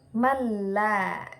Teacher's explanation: cara bacanya yaitu dengan masuk tanpa dengung dengung contoh malla jadi masuk tanpa dengung seakan-akan berharakat tasdid malla nun sukun bertemu dengan lam malla seperti itu hukum bacaan